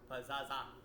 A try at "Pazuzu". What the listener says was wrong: No, U, not A. Pazaza.